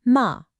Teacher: And finally, we've got the assertive tone. This one is just a sharp, quick drop from a high pitch to a low one. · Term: fourth tone